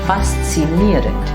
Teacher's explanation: it's ieren, that should be stressed, and there's a D at the end.